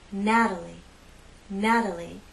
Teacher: in this name we have three syllables and it's the first syllable that's stressed Natalie Natalie the T is part of an unstressed syllable so · three syllables and it's the first syllable that's stressed Natalie Natalie the T is part of an unstressed syllable so we use the flap T